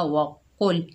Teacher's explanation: कौफ के ऊपर पेश, आगे लाम साकिन है, कौफ को लाम से मिलाएंगे, कौफ हुरूफ मुस्ताला में से है, मोटा पढ़ा जाएगा, वक़ुल। नून के ऊपर ज़बर है, आगे अलिफ खाली है, ये अलिफ मद्दा है, 1 अलिफ की मिकदार खींचकर पढ़ेंगे, ना।